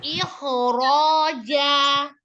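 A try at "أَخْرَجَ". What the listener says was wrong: Jangan dipantul, jangan ikhroja. Naikkan rahangnya.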